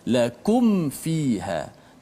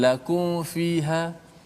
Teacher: Sebab mim dengan huruf waw dan min dengan huruf fa, dia sudut makhrajnya dekat. Ketiga-tiganya melibatkan bibir belaka. Mim bibir, fa juga bibir, waw juga bibir. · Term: izhar syafawi